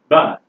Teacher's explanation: The letter B here certainly stands for the sound, ba, your bilabial plosive